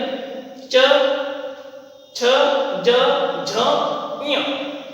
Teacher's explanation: अब बोलते समय भी हमको ये ध्यान रखना है, कंठ है गले से जिनका हमने उच्चारण किया, तालु यानी दांत के ऊपर का हिस्सा, जब जीभ टच होती है वहां से इन शब्दों का उच्चारण होता है